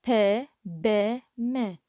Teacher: sounds in which the lips are in contact with each other are called bilabial. الأصوات اللي يكون نتيجة ارتباط أو تواصل أو احتكاك الشفاه ببعضها نصيح لهن بايليبيال.